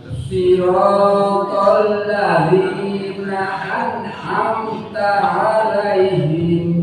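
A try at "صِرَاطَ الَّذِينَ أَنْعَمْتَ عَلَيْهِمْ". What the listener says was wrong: Ya, sama. Na'an, tidak ada e-nya. Na'an. Na'an. Jadi tinggal huruf so-nya tadi, Pak.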